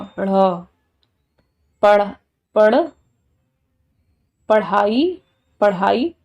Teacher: जीभा पहले मूर्धा पे लग रही है फिर एकदम से नीचे आ रही है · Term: उत्क्षिप्त व्यंजन